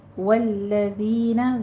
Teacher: ذال کے اوپر بھی نرمی کرنی ہے، سیٹی کی آواز نہیں آئے گی